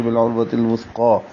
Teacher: قاف موٹا پڑھیں گے اور کھڑا زبر دو حرکات لمبا کریں گے